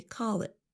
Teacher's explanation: we don't really pronounce the letter t at the end of the phrase. Instead of saying call it, we say call it with a held t.